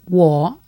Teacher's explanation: I is wo, and it's got the down and up again